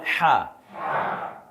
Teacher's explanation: কন্ঠনালীর মাঝখান থেকে বলেন হা